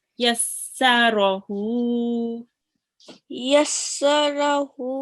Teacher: just prolonging the ha a bit. more than 1 second. So for 2 seconds.